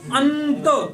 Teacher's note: इसमें ना का उच्चारण होता है ना, अंत, तो केवल नाक से ध्वनि निकलती है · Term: अनुस्वार